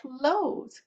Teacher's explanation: And we open our mouth and we make the sound at the back. So, and the tip of our tongue stays down. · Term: k sound